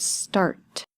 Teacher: if you put your hand in front of your mouth and say the word start, at the end you should have a little bit of air that comes out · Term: voiceless sound